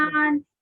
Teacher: इसमें तकरार होगी लेकिन बहुत ज्यादा मुबालगा नहीं करना इसमें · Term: रा की जो तकरार